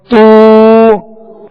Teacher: اب الٹا پیش ادا کرتے ہوئے ہونٹوں کو کامل گول کریں گے